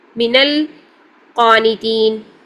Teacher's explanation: تو پہلے ساکن کو ہم فتحہ دے کر پڑھیں گے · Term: فتحہ کا قاعدہ